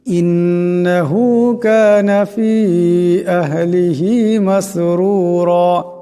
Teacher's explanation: এখানে দম সারলে আলিফ রাকে এক আলিফ লম্বা করিয়া পড়তে হবে।